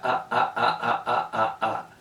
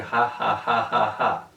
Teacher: se corta totalmente el aire en la garganta · Una forma es una oclusiva glotal y la otra forma es como una fricativa glotal. La fricativa glotal se oye como una J en español de México.